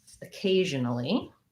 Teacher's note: i have a letter o but it says the uh sound because it's unstressed schwa at the start of the word